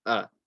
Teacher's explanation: So you might hear people say Ar-Rahman, oh, they're saying oh instead of a. You want to make sure that the alif is light. So don't say oh, say a.